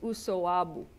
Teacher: this B is in between two vowels. And so the B becomes a W